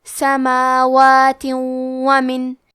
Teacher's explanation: ہم تنوین کو واو میں ملا کے غنہ اور تشدید کے ساتھ یہ حکم کو ادا کریں گے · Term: ادغام بغنہ